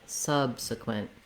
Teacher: the word subsequent has first syllable stress so that means my sub syllable is longer than the other two and it has a clear vowel a stressed schwa the uh · means my sub syllable is longer than the other two and it has a clear vowel a stressed schwa the uh sound subsequent the other two vowel sounds are what are called reduced